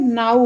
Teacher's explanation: शब्दांत में आने वाली ध्वनि व निश्चित रूप से ऊ हो जाती है